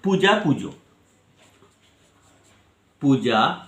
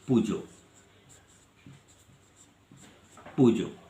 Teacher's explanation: পূর্ববর্তী স্বরধ্বনির প্রভাবে পরবর্তী স্বরধ্বনি পরিবর্তিত হয়ে প্রগত স্বরধ্বনি হয়। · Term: প্রগত স্বরসঙ্গতি